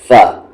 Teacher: دھیان سے اسے آپ کو فا کہنا ہے، نہ کہ پھا، فا، فا، زبان اوپر کے دانت کا کارنر اور نیچے کا لپس